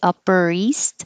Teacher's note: the r from upper will connect to the e upper east and instead of saying east i'm not going to release the